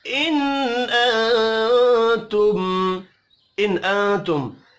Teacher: نون ساکن کے بعد حمزہ ہے، اظہار حلقی ہوگا، غنہ نہیں ہوگا